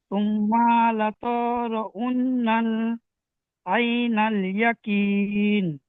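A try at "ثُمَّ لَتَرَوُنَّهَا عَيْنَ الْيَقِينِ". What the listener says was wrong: সুম্মা লাতারাউন্নাহা। গুন্না করেন, তাসদিদ, নুন তাসদিদ, মিম তাসদিদ, সব গুন্না ছেড়ে যাচ্ছে কেন?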